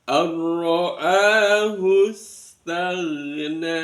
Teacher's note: Maka disebut dengan bacaan idgham bila gunna, dimasukkan tapi tidak mendengung. Kemudian ro-nya karena berharokat fathah maka ro-nya dibaca tafkhim, langsung tebar ar-ra'ahus.